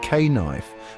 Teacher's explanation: the K was actually pronounced. It was like K-knife with a harsh guttural K sound.